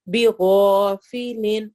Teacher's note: تو یہاں پر الف سے پہلے غائن آ رہا ہے، غائن موٹے حروف میں سے ہے، اسی لیے ہم الف کو بھی موٹا کر کے پڑھیں گے. بیغا کر کے نہیں پڑھیں گے، بیغا آواز کو موٹا ہی رکھیں گے. · کیونکہ اس سے پہلے والے حرف پہ فتح ہے، زبر ہے، میم کے اوپر زبر آ رہی ہے. بِغَافِلٍ غا الف مدہ بھی ہوگا اور الف موٹا بھی ہوگا